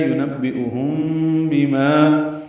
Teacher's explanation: میم ساکن کی بعد با آنے کی وجہ سے اخفاء شفوی ہے